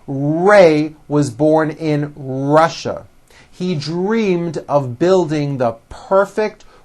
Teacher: notice how my lips come forward on all my RS and W's